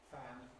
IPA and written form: fæn (fan)